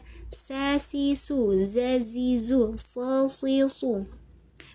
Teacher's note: Ketika kita mengucapkan tiga huruf tersebut ada desisannya, ada siulannya ya. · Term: sifat asofir